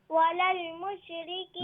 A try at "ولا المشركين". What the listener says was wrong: No, not mush. ولا المشركين. There's no qalqala on the lam or the sheen. Okay, qalqala is only in qutb jaddin. Okay, qaf ta ba jim dal. ولا المشركين.